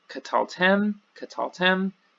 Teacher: so the last syllable gets the accent, but notice there's a faint, not even faint, but familiarity here between the pronoun, the tav segol mem, and we're ending with the tav segol mem.